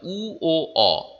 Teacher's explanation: উ, ও, অ গোল হয়ে যায়, ঠোঁট ওষ্ঠ অধর দুটো কুকড়ে যায় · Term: কুঞ্চিত স্বরধ্বনি